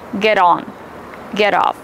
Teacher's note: The letter T is between two vowels. We pronounce it as a fast D.